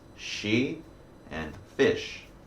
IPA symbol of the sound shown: ʃ